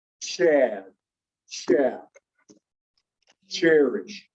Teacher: it is a t followed by sh